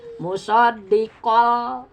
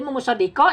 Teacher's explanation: Idgham dimasukkan tanwin ke lam.